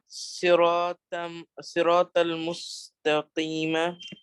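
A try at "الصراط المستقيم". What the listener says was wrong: As-sirat al-mustaqima. There's an al at the beginning.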